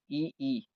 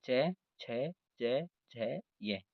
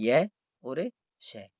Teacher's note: इनका उच्चारण स्थान तालु होने के कारण इनको तालव्य वर्ण कहा जाता है